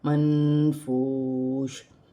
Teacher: نون ساکن میں اخفا ہوگا، نون ساکن کے بعد حروف اخفا میں سے فا آ رہا ہے تو یہاں نون ساکن میں اخفا کیا جائے گا، واو ساکن سے پہلے پیش ہے تو واو مدہ بنے گی، واو کی صورت میں زیر گر جائے گی اور شین ساکن ہو جائے گی۔